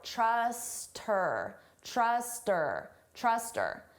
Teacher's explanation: we can get rid of that H sound and it just sounds like trust her